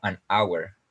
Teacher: no se pronuncia la h en esta palabra